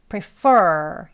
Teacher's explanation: 여기는 보시면 이음절인데요. 강세가 앞에 있지 않고 뒤에 있습니다. 그래서 prefer, 할 때 여기를 입술 내밀고 혀를 많이 당겨서 발음해 주셔야 돼요.